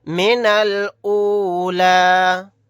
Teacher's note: نون کو ڈائریکٹ لام ساکن کے ساتھ ملائیں گے، یہ الف نہیں پڑھا جائے گا۔ لاسٹ میں جو یا ہے یا بھی نہیں پڑھا جائے گا۔